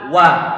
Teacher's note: huruf wawu dia termasuk huruf yang punya sifat istifal. Istifal dia karakternya adalah tarqiq, muraqqaq, tipis. Sehingga kalau tipis maka jangan kita baca wa'il, wa.